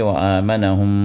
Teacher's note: پھر وآمنہم کے اندر پھر میم مشددہ ہے، پھر میم پر شدہ آیا تو یہاں پر بھی میم کو غنّے کے ساتھ ادا کریں گے، 2 حرکت تک وہاں بھی دبائے رکھیں گے